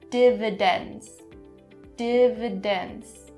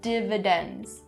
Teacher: There are 3 d sounds in this word, and you have to make sure you have them all, and especially making that last one really clear